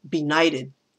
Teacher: benighted has the stress in the middle of the word.